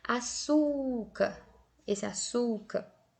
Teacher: Esse açúcar, a sílaba mais forte é esse su, né? Inclusive está acentuado. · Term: paroxítona